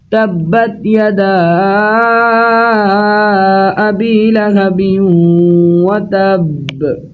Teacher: تبت با حروف قلقلہ میں سے ہے اور یہاں پر با کے اوپر شد ہے، اس لیے با جماؤں کے ساتھ ادا کیا جائے گا۔